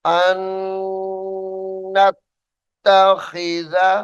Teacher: नून साकिन को छोड़ देंगे और हमजा को नून मुशद्दद के साथ मिलाकर गुन्ना किया जाएगा। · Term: इदगाम